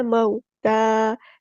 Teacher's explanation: لام یہاں پہ لام قمری ہے۔ موتا، واؤ مدہ نہیں ہے یہاں پر، بلکہ واؤ لین ہے، نرمی سے موڑنا ہے۔ مو، ٹھیک ہے، مو نہیں پڑھنا، مو تا، تا پہ کھڑا زبر ہے، مد اصلی کریں گے۔